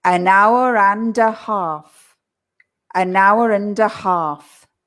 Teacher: the D from the and pushes to the a. So we say duh, an hour and a half, an hour and a half.